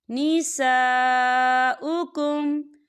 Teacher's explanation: نساؤکم، یہاں دیکھیں نساء خالی الف سے پہلے زبر ہے اور اس پر مد بھی ہے، تو ہم اسے 4 حرکت کے برابر کھینچ کے پڑھیں گے